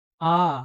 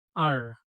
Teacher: আ একটু দীর্ঘ, শেষে রয় উচ্চারণটা হয় না।